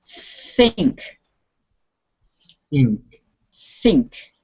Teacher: So you need to really pronounce the TH sound. You put your tongue against your front teeth and you blow air through. Think. Think.